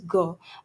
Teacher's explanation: velar plosive sound, plosive sounds और soft palate यानी वेलम के कॉन्टेक्ट से बनती है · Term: वॉइस्ड वेलर प्लोसिव